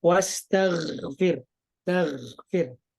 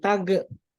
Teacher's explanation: Temponya lambat, tapi tidak sampai memantul. Bukan tag. Kalau kolkola itu kan cepat dan memantul, cepat dan memantul.